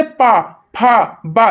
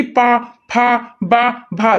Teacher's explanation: देखिए होठ दूसरी होठ से टकरा रही